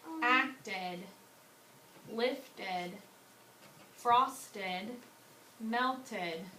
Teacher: So if suffix ed comes after a T, a T sound, you will pronounce it ed.